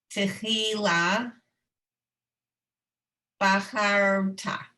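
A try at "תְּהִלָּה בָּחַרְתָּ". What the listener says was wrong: Good. Okay.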